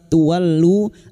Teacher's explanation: diikuti wawu sukun 2 harakat mad tabi'i